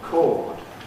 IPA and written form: kɔːd (cord)